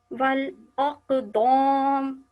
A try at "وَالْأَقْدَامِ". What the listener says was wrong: دوم نہیں, اس طرح سے پڑھیے وَالْأَقْدَامِ.